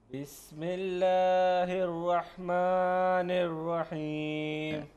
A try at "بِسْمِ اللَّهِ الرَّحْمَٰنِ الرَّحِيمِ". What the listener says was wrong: اس کو لمبا نہیں کیا جائے گا. بسم الله الرحمن الرحيم.